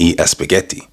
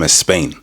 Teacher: dead giveaway is adding E to anything that starts with an S. For example, I want to eat a spaghetti or I'm coming from a Spain.